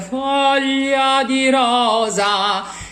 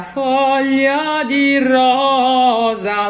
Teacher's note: So you have 3 open O's there on that rosa.